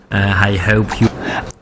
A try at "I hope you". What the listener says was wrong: I hope. Ici, on observe un H. C'est ce qu'on appelle le H parasite.